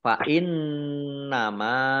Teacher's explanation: nun tasdid, dibaca gunah atau mendengung, ditahan 2 harokat. Mim fathah alif mat tabi'i, panjang 2 harokat.